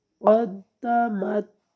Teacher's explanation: مت نہیں کرنا آگے کیونکہ تا میں قلقلہ نہیں ہوتا، تو تا کو جو ہے نا قدمت بس یہاں تک لا کے اس کو ختم کر دینا ہے۔